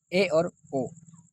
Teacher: अर्ध संवृत स्वर के उच्चारण में मुख द्वार कम खुलता है